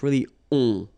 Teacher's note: Okay, and then this O-N, so it's a nasal and it goes in your nose and it goes like on. All right, so you don't hear any N, so it's really on